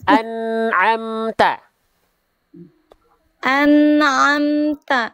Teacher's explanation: Nun sukun tidak punya sifat kolkola. Jadi jangan sampai dipantulkan.